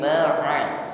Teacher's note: Huruf ain pengucapannya kita lunakkan saja, jangan kaku sebagaimana huruf hamzah